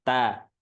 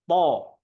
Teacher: Kalau tok itu naik. Jadi istiqla itu naik. Nadanya itu naik. Po. Nah, itu kan naik.